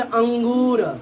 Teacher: अंगूर, तो इसमें नाक से भी अगर बोलोगे तुम उच्चारण करोगे अंगूर, तो वायु जो होगा नाक से भी बाहर आएगी और मुख से भी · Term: अनुनासिक